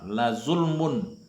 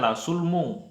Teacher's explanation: Kenapa saya baca kedengaran n bukan ng tapi n? Karena dia adalah ishar. Ishar itu harus jelas. La sulmun azim, bukan la sulmung tapi la sulmun azim.